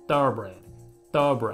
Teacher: 人によってはもうほぼこの▁R▁の音が抜けちゃってる場合もあって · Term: 弱い▁R▁の音